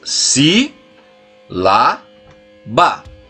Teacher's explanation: A antepenúltima. O ba é a última sílaba, lá é a penúltima, só que a sílaba mais forte é o si.